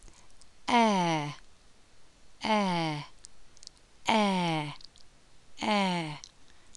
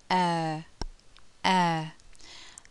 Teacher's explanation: the lips go from being spread to more rounded, air, air, and the tongue moves from the front of the mouth to the centre of the mouth.